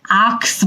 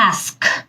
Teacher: অনেকেই আমরা কিন্তু এই শব্দটাকে আক্স বলি, আক্স কিন্তু কারেক্ট না, ask. সা সাউন্ডটা আগে আসবে, কাটা পরে আসবে।